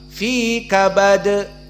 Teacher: Adapun kabad, kaf, ba dan dal semuanya huruf yang mufakhamah. Namun di saat kita mensukunkan dal kabad, berarti harus qalqalah.